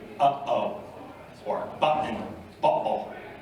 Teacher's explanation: Next one's a glottal stop. We're going to stop the air right in the middle of our glottis.